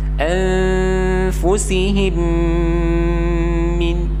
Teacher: Mimnya ada 2. Nah, jadi makanya ditahannya agak lebih lama karena juga status hukumnya berubah menjadi idgham mislain atau idgham mimi.